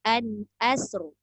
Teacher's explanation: Hamzah nipis, sin nipis, ra je tebal.